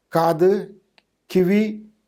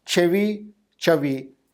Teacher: the first two languages have a velar stop, whereas the last two have a palatal stop. There's a very interesting sound change in between those two languages, but then that proves that they belong to same group.